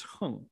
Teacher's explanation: as a noun, it's hung, fourth tone